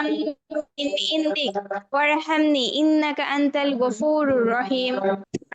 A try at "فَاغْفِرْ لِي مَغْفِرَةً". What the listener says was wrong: আপু, ওয়াইনের উচ্চারণটা আরো ক্লিয়ার করে বলতে হবে। ফাও ফির লি মাও ফিরাতাম মিন ইনদিকা ওয়ারহামনি ইন্নাকা আনতাল গফুরুর রহিম।